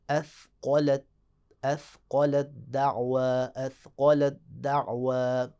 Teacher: مثال دیکھتے ہیں، مثال ہے اثقلت دعوا، اثقلت، اب دیکھیں اس کلمے میں آخر میں تا ہے جو کہ ساکن ہے، اور فوراً اس کے بعد ہے دعوا، دعوا کا شروع میں دال متحرک، تو تا کو دال میں ادغام کریں گے، اور توجہ کریں کہ جب تا کا دال میں ادغام کریں گے تو تا نہیں پڑھا جائے گا، تا بالکل دال میں چھپ جائے گی